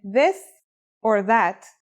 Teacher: pronunciation is a vo sound the as in this or that it's pronounced with the tongue between the upper and the lower teeth